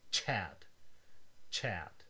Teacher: English has two of these, where a T and an esh are produced at the same time to produce the sound ch